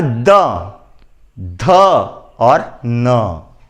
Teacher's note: दांतों को स्पर्श करने वाले जो वर्ण हैं, यह दंत्य वर्ण कहलाते हैं।